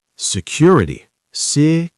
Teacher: Four syllables. Stress on the second.